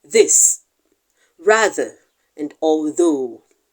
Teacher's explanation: we will be discussing the voiced Dental fricative